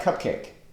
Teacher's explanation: Spondiac, stress, stress, it's very unusual, a word like cupcake. 2 stressed syllables.